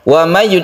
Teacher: Idgham Bighunnah kita panjangkan suaranya karena Idgham Bighunnah itu Bighunnah artinya dengan dengung